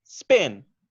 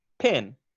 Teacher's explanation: some air is going to come out with spin, but you will notice a sharp puff with pin, right? And the paper should move more, or you should feel it more in your hand when you do it. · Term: puff of air